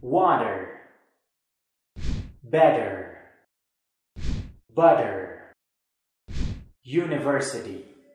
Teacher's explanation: it is pronounced like the sound de this is called the flap t · americans don't usually fully pronounce the sound t when used in the middle of a word instead they pronounce it like a soft de